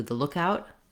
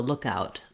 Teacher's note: when it's being used as a noun, we need to stress on look.